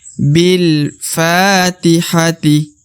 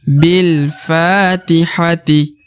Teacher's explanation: Di depannya terdapat alif. Maka fa harus dipanjangkan 2 harokat.